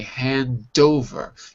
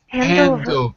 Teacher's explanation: The D goes to the second word.